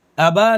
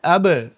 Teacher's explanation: با پر جزم ہو تو ان کی آواز کیا ہے؟ ٹکر کھا کر اوپر کو اٹھے گی، الگ ہو جائے گی۔ تو ابا نہیں بولنا ہے، اب۔ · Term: قلقلہ